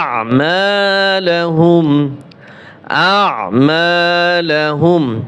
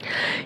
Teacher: হামজা আইন জবর আ, গলার ভিতরে চাপিয়ে বলতে হবে